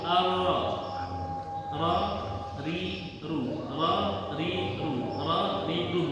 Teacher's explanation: yang membedakan juga selain makhrajnya mungkin getarannya yang membedakan antara R Indonesia dengan r-nya Inggris